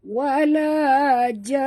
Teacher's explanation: sebelum kita berhenti, kita kena dengung dulu kerana di atas nun ada tasydid ya, wajib al-gunah ya.